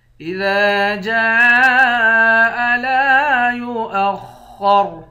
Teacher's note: جیم کے بعد الف ہے، اس الف پر مد ہے، اس مد کو 5 الف کے مقدار کھینچ کر پڑھتے ہیں۔ لام کے بعد الف ہے، الف حروف مدہ ہے، 1 الف کے مقدار کھینچیں گے۔